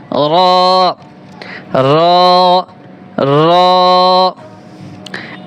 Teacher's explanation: জিহ্বার আগার পিঠ তার বরাবর উপরের তালুর সঙ্গে লাগিয়ে একটি হরফ উচ্চারিত হয়